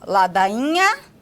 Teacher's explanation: A representação gráfica dele seria o NH, né? Que é uma consoante nasal palatal no início de sílaba